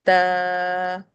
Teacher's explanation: زبان کی نوک یا ٹپ آف ٹنگ سامنے والی دانتوں کی جڑ پر لگتی ہے اور ہونٹ نارمل رہتے ہیں